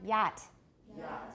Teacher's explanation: We know that that's a palatal, it's the only palatal sound that we have. It's a palatal approximant.